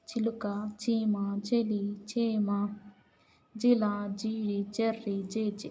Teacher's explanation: ఇ ఈ ఏలతో కూడిన చజలు తాలవ్యంబులు